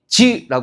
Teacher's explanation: 혓바닥 가운데가 단단한 입천장을 막았다가 그죠? 터지면서 소리가 나는데 그 순간 그 사이로 공기가 긁히면서 난단 말이죠. 그래서 이런 것들을 파찰음이라고 얘기를 하는 거고요.